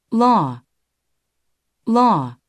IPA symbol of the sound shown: o